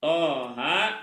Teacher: jadi Thaha itu dibacanya dua harakat jangan thha [Musik] enggak boleh terlalu banyak ya terlalu panjang Coba